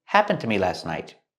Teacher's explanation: The D in happened is a stop D when you link the words.